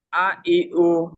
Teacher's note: লম্বা স্লো উচ্চারণ হয়নি। কুইকলি পড়েছি, তাই না?